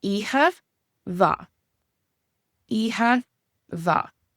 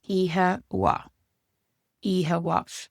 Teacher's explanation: And that would be in Munster, where they pronounce the MH like a V. And then in Connacht and Ulster, they pronounce this like a W. So it's ihe wa.